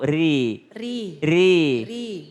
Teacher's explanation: Ada ra baris kasra. Ra baris kasra maka tipis.